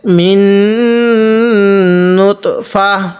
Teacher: মিন নুতফা তিন ওয়াকফ করলে মিন নুতফা এরকম করে করব কারণ ওয়াকফের সময় এই গোলতাটা হা হয়ে যাবে